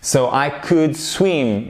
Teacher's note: Évidemment, c'est un ou court. C'est pas we could et on ne prononce pas le L.